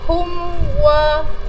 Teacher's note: mim mati akan dibaca dengan jelas tanpa dengung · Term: izhar syafawi